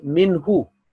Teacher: This will be a shorter because here on ha there is a dhamma. Minhu, not minhu, because it does not change the meaning, but it does affect the beauty of that letter.